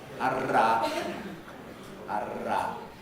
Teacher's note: a tongue tip trill made by vibrating the tongue tip against the alveolar ridge, like this.